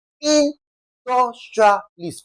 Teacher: Now, the rule is also stating that whenever we have to stress a word that ends with I S T, we are going to lay emphasis on the first syllable, okay?